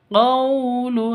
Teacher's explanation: Qawlu, qaw sifat lin, lentur, lemes.